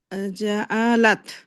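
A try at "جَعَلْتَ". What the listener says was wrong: জালতা। করবেন একটু শুনেন, এখানে জাস্ট তখন এটা সুকুন বা যজম নিয়ে নেবেন।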